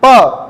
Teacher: प दोनों होठ टकरा गए, ओष्ठ है।